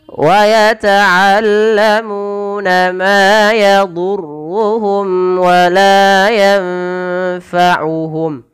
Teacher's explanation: Mim mati bertemu waw, jelaskan karena ia izhar syafawi. Ma yadurruhum wa la yanfa'uhum, wala panjangkan dua harakat, ifa ya, nunnya samarkan ke fa langsung.